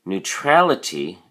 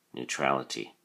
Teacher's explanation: notice that the emphasis or stress is now on the a